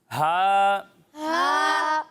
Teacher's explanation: जब आप हा की अदायगी करेंगे तो इसे हलक के नीचे वाले हिस्से से पढ़ेंगे।